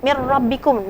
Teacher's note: ada Idgham Bilaghunnah nah nun mati bertemu dengan roh ini termasuk idgham bilagunnah idgham tapi tidak didengungkan